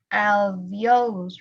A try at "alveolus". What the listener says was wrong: However, this U does not sound like an U. It sounds between a U and an O. Alveolus.